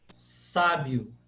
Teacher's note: semivogais também em português como por exemplo quando eu digo sábio esse I de sábio ele é uma semivogal uma vogal um pouquinho mais leve